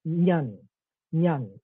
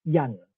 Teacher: For example, Mandarin, Zhen, meaning people, Zhen in Mandarin is nyan, nyan in Pinghua, but yan in Cantonese, right? Ny has merged into y in Cantonese.